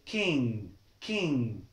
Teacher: The second pronunciation of N, when it falls by G there is G after the N. So we remove this G, we don't say it, it's silent. And we stress the N.